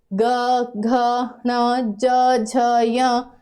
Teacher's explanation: तीसरा चौथा और पांचवा लास्ट के जो तीन होते हैं वो सारे सघोष होते हैं जब इनको बोलते हैं तो आवाज ज्यादा कांपती है